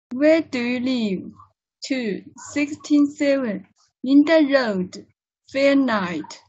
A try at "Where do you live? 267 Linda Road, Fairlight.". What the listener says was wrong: Yeah.